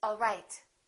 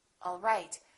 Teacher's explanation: One is falling intonation and one is rising intonation.